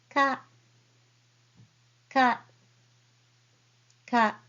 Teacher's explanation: you don't need to aspirate too much like K but just say softly K